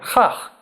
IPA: ɬæɬ